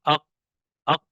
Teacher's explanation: آواز جو ہے مخرج میں قوت کے ساتھ جو ہے وہ ٹھہر رہی ہے، اق اق، ٹھیک ہے، اور آگے جب ٹھہرنے کی وجہ سے وہاں پر جو ہے سختی کی وجہ سے ہمارا سانس بھی جو ہے بند ہو گیا، اق اق۔ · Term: مجہورہ